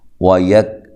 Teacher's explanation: کاف کو باریک ادا کرنا ہے اور ہلانا نہیں ہے